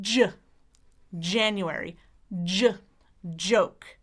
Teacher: your tongue starts in the same place as our L on the bump, /d/ but then it releases and creates friction just behind there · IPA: /dʒ/